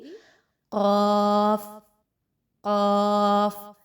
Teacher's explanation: पीछे से जुबान की जड़ है उस को ऊपर के नरम तालू के साथ जब अटैच करेंगे तो हर्फ कफ अदा किया जाएगा और इसको हमेशा मोटा पढ़ा जाता है तो अभी तक जितने · تو آپ یاد رکھیے کہ زبان کا جو آپ کا جڑ ہے، زبان کی بالکل جو سٹارٹنگ پورشن ہے پیچھے سے زبان کی جڑ ہے، اس کو اوپر کے نرم تالو کے ساتھ جب اٹیچ کریں گے تو حرف قاف ادا کیا جائے گا، اور اس کو ہمیشہ موٹا پڑھا جاتا ہے۔